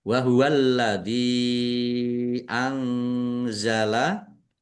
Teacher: alladzi lamnya ada tasdidnya dibaca dobel ditekan dan ditahan biar tampak dobelnya. Dal kasrah ya sukun mad thobi'i. · Nun sukun bertemu dengan huruf za. Bacaan ikhfa dibaca samar-samar.